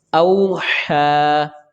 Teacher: ہا کے اوپر کھڑی زبر ہے، ہا کی آواز کا بھی خیال رکھیں گے لیکن اس کو ایک الف کے برابر کھینچیں گے. اور یا یہاں پر رسم الخط ہے، یہ نہیں پڑھا جائے گی، یعنی کہ یہ یا لکھا گیا ہے لیکن پڑھا نہیں جائے گا.